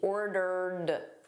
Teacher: So notice this ED here is just a soft D.